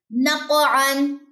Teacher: कलकला होगा साथ में काफ मोटा पढ़ा जाएगा।